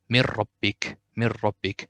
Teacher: If it's ra or lam, we'll do idgham bidun gunna. So we will not say anything from this noon, and we will go to ra directly. So it will be mir rabbik, no gunna and no noon here in this case.